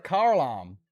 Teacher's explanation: Well, a car alarm suddenly has an R in it.